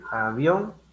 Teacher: avión tiene la mayor fuerza de voz en la vocal abierta, que es la O